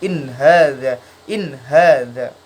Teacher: Idhar sendiri artinya jelas, cara bacanya jadi dia nun sukunnya terlihat. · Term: idhar halki